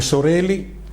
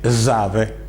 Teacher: alla S alveolar sorde come sorelli e alla S sonore come zave